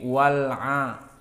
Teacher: Jika tanpa waw maka dia akan dibaca al-'adiyati. Namun karena ada waw, hamzahnya jatuh, tidak dibaca. Jadi wal-'a langsung kepada lam. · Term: hamzah wasl